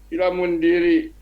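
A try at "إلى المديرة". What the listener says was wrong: Ilal. Ada nunnya Pak. Ilal mudirati. Ilal. Ilal mudirati. Ilal mudirati.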